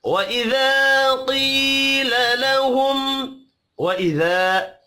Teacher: وإذا الف مدہ ہے ایک الف کے برابر کھینچ کر پڑھیں گے